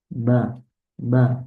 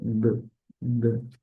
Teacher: Bagaimana bibir kita merapat, kemudian kita apa mendorongnya sehingga ada syiddah, baru kita lepas b. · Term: huruf ba